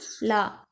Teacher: நாவின் இரு பக்கங்கள் தடித்து மேல் அன்னத்தின் நடுப்பகுதியை தொடுவதால் தோன்றும் எழுத்து லா. இது நகர லகரம் என அழைக்கப்படுகிறது.